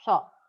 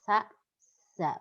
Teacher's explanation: Sa dan za juga memiliki sofir tapi tidak sebanyak so. Sa, za. Berarti ada desis siulannya ya.